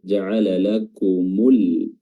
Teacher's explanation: lamnya dibaca jelas dan huruf hamzahnya juga dibaca jelas tanpa diidgamkan dan rnya di sini ee tafkhim ya tebal karena sebelumnya karena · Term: alif lam alqamariah